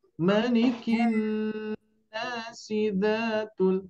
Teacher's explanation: Ketika diwasolkan, naknya jadi 2 harokat aja.